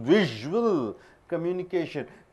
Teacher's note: S is pronounced as z